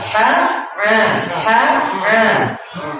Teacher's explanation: Jadi huruf ha, tenggorokan bagian tengah.